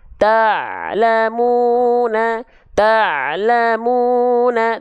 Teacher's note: Ain itu tidak mengalir suara dia hanya sedikit saja mengalir ya tawassut